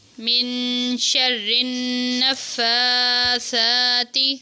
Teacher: فا اور سا کے اوپر کھڑی زبر ہے، ان کو لمبا کرنا ہے ایک ایک الف کے برابر